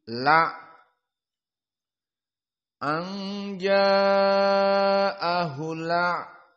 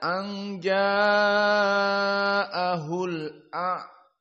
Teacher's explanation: dipindahlah harokat hamzah yang fathah kepada lam. Jadi la, anja'ahul la, tidak anja'ahul a. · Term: an-naql